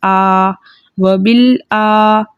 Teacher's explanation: کھڑا زبر کو 2 حرکت مقدار کھینچ کر پڑھتے ہیں